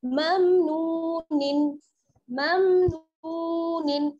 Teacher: वाव साकिन है, वाव साकिन से पहले पेश की हरकत है, इसलिए क्या हो जाएगा वाव मद्दा, थोड़ा सा खींच कर पढ़ेंगे